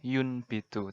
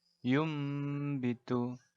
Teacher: Dan nun mati atau tanwin mubah nanti dibacanya seperti ada mimnya. Jadi dibaca nun mati atau tanwinnya ini menjadi suara huruf mim mati. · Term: iklab